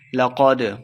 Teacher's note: قاف موٹا پڑھیں گے، دال ساکن ہے، حروف قلقلہ سے ہے، اس کو خوب واضح کریں گے